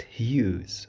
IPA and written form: hju:z (Hughes)